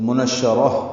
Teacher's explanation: را کو تا سے ملا دیں گے، تا مربوطہ ہے وہ ہا میں تبدیل ہو جائے گی وقفاً، تو منشرہ ہو جائے گا.